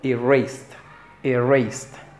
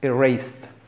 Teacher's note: Está ahí, es cortita, no es i, es e, erased. Es una e, es como entre medio de la e y nuestra i